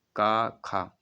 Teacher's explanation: कंठ से आती, सीधा प्रेशर कंठ पर पड़ता है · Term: कंठ ध्वनियाँ